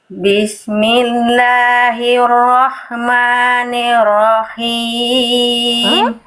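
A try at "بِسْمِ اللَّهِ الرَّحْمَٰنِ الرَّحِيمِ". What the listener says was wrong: Belum maksimal, tapi lebih bagus. Lebih bagus, sudah mulai kerasa bagus H kecilnya ya.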